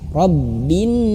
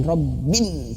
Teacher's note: Semua huruf pokoknya harus ditekan kalau ada tasydid, kecuali nun dan mim. Nah, ini nun itu harus digunnah, ditahan. Rabbin, jangan ditekan.